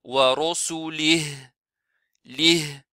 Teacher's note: si on s'arrête, on n'applique pas le med et on n'applique pas kasra. On s'arrête avec sukun.